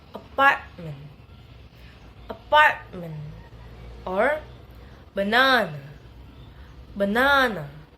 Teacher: primary stress in the second syllable, and then the other syllable are unstressed